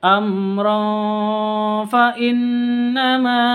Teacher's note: tanwin bertemu dengan Fa samar di dengungkan karena ikhfa